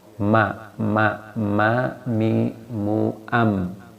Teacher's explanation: Ma, mi, mu, am, tanpa bibir tidak bisa, tidak menggunakan bibir maksudnya, nggak bisa ma, mi, mu, am, jadi harus menggunakan bibir, namanya asyafatain tempat keluarnya ya.